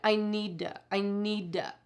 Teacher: you heard to changing to duh a lot